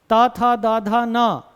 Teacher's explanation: जीभ दंत को टच करेगी ही करेगी।